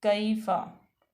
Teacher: उसके बाद याय साकन माकबल मफ्तू, तो याय लीन होगी, नरमी से पढ़ा जाएगा। कैफ़ा, फ़ा हरूफ शफ़िया में से है और फ़ा मफ्तू है।